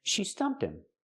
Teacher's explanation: We hear the h in him is silent because it's not an important word. We don't stress it. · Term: h is silent